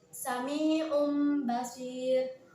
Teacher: suara nun sukun atau tanwin tersebut diganti dengan huruf mim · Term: iqlab